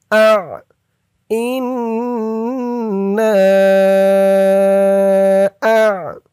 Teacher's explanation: আইনের উচ্চারণটা গলার ভিতর থেকে শক্ত হয়ে বের হবে। আ, ইন্না আ।